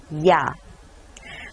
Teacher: ya is a combination of ee and ah so it eventually becomes yeah so instead of two syllables try to have only one syllable